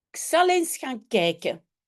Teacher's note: on prononce souvent simplement is au lieu de eens